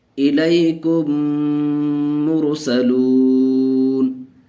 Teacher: میم کو میم سے ملا کر کے غنہ کے ساتھ پڑھیں گے، تو اس لیے ہم نے غنہ کر کے پڑھا الیکم مرسلون۔